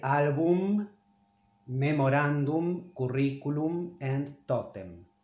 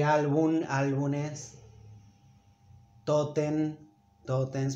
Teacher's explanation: In fact, I mean, we must say album, memorandum, curriculum, and totem. But many native speakers pronounce them in a wrong way and turn this into an N because it's a rare letter at the end of a word in Spanish. So they say album, álbumes, totem, totems, but it's wrong.